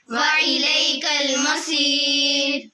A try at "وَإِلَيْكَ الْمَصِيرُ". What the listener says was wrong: हमजा बोलना आइन नहीं निकालनी وإليك المصير